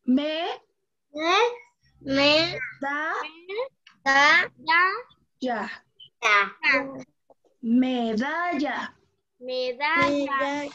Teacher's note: Empezamos con un volumen bajo. En la da aumentamos el volumen. Y en la ya lo volvemos a bajar.